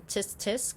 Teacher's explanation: the click that's at the back of the teeth as in tisk